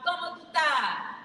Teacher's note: Rolled R's and missing S's punctuate every loud Como tu ta